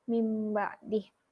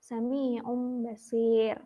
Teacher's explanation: nun sukun bertemu dengan huruf ba, dibacanya jadi mim sukun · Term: iklab